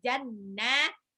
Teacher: Jannatin nunnya tasdid. Tasdid ada sifat gunnah.